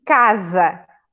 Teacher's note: o mesmo fonema por várias letras por exemplo em casa ué se é a letra s mas é um som de z